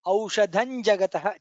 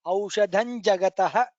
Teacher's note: Aushadham, dha is Mahaprana. Aushadham Jagataha, it becomes Aushadhan Jagataha.